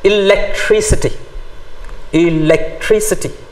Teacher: stress the third syllable from the end if a word ends in i t y i c a